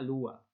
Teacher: se pierde la n entre vocales